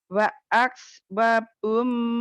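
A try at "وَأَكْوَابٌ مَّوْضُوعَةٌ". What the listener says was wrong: Wanya panjang. Wa akwabum mawdu'ah.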